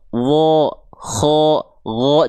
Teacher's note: Kalau vokalnya seperti O, maka dia akan terdengar tebal. Huruf tebal itu ketika fathah atau baris atas bukan vokal A lagi, tapi kedengarannya kayak vokal o.